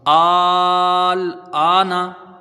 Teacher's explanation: حمزہ میں کھڑا زبر ہے، الف مدہ کی برابر ہے، حرف مد کے بعد لام میں سکون لازم ہے، پہلے سے ہی ساکن ہے لام، تو یہاں مد لازم ہوگا جس کی مقدار 3 الف یا 5 الف۔